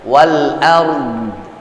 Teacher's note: kalau di sini sesungguhnya dia wal ardi, tapi tetap harakat di penghujungnya nggak terbaca